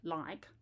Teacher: the one at the beginning is a light L